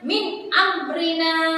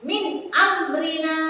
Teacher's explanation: makharijul huruf dari idhar halqi adalah di tenggorokan. Jadi jika ada nun sukun atau tanwin bertemu huruf idhar halqi, maka harus dibaca jelas, tidak boleh mendengung.